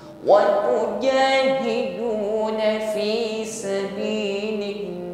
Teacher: mengucapkan huruf jim tanpa diiringi dengan nafas yang mengalir. Apalagi sampai ada bunyi desis ya.